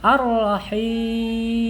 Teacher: ra-nya tebal ya. Nah, ini ra tafhim ya, karena harokatnya fathah di sini